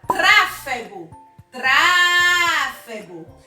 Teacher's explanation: Então, a sílaba mais forte é a antepenúltima sílaba. Se nós temos a antepenúltima sílaba mais forte, nós chamamos as palavras de proparoxítonas.